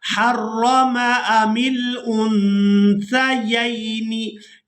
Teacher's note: क़ाफ लाम पेश कुल, हमज़ा ज़ाल खड़ी ज़बर मद, आज़, आज़, ज़ाल ज़बर ज़ा, आज़, काफ ज़बर का, कुल आज़का, रा या ज़बर रई, नून ज़ेर नी और रईनी, कुल आज़करैनी हर्रम, हर्रम अमिल उन्सयैनी। यहाँ नून साकिन पर इख्फा करेंगे यानी नून की आवाज़ को नाक में छुपा कर अदा करेंगे